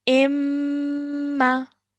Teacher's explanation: i'm holding the meme sound in my nose before letting it go to produce the fatah sound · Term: nasal sound